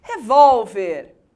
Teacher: Revólver, palavra paroxítona, a sílaba mais forte é a penúltima.